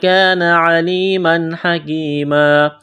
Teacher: تنوین کے بعد ہا ہے، اظہار کریں گے، یہاں پر بغیر غنے کے پڑھنا ہے